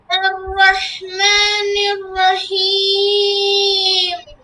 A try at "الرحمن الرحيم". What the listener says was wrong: হ্যাঁ, নাকে যাবে না। আর রহমানির রহিম।